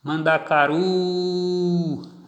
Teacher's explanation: a tonicidade da palavra Mandacaru está aqui na última sílaba · na última sílaba, ru, o grito se intensificou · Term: sílaba tônica